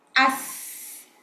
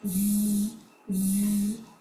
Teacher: sin has a whistling sound, za has a buzzing sound, whereas swad is a heavy letter.